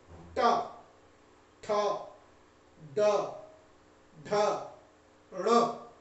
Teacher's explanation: जीभ पहले उलटता है और उसके बाद ऊपर में जाके जिस स्थान को स्पर्श करता है उसी का नाम है मूर्धा। मूर्धा के स्पर्श से जिन वर्णों का उच्चारण हो उन्हें मूर्धन्य कहते हैं।